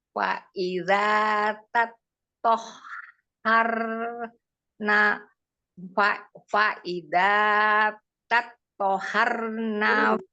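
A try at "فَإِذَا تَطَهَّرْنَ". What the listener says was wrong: Yang tasdid mana yang tasdid? Yang tasdidnya ha, tonya tidak. Faiza tatoharna.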